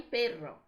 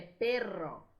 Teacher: Quando nós temos dois R's, em espanhol, esse R vai vibrar duas vezes, vai vibrar mais ainda. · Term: doble R